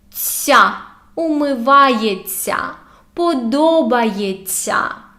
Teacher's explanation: When we have this ся, we say it like long, soft т.